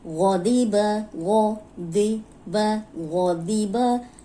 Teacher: غین موٹا، ضاد موٹا، اور با کی زبر کو لمبا ہونے سے بچانا ہے۔ غضیبہ، یہ دونوں موٹے ہیں۔